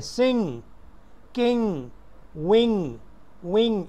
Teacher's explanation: इंग साउंड आ रही है, एंड पे ग की आवाज़ नहीं है